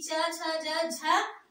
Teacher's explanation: च वर्ग का उच्चारण तालू से